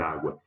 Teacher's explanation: Ela tem um ditongo na última sílaba, mas a forte é a penúltima